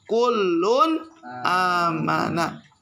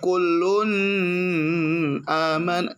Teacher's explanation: Termasuk gak? Maka berlaku hukum tajwid izhar halqi. Maka kudu dibaca jelas.